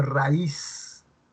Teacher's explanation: hay una vocal abierta, que es la a, y la vocal cerrada, que es la i